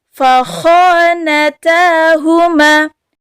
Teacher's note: Kha ini sama kita ketika lagi ngorok. Berada tenggorokan bagian atas. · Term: huruf kha